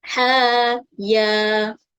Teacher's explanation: Kemudian tambahkan alif menjadikan bacaan panjang sebanyak 2 harokat.